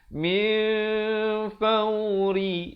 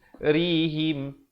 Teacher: Min asalnya min, tapi kalau kita baca min faurihim, panjang dah cantik tetapi bunyi tak betul. Yang betulnya min fauri, ri di sini menjadi nipis.